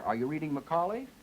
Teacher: I say all of this on pitch two until I get to that primary stress where I go to three and I remain on three and then I go up at the end and that was what that little double bar meant that showed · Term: intonation pattern